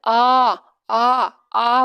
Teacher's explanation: हैं कि मुख खोलने के आधार पर दो होते हैं विवृत आ बड़ा जैसे बोल रहे हैं तो दोस्तों मुख पूरा पूरा खुल रहा है यहां पर विवृत होगा